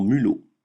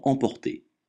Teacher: le m se prononce me comme dans mulot, jamais nasalisé comme dans emporter